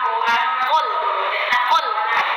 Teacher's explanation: Dibaca tebal. Kenapa dibaca tebal? Adanya pangkal lidah yang terangkat.